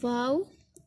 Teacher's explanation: ये दोनों होंठों की गुलाई से अदा होता है।